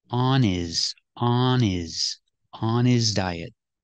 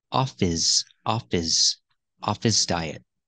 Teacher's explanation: the H is silent because his is not a stressed word link the sounds on is on his on his diet he